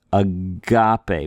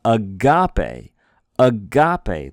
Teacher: We're trying to put a little more oomph on the ga.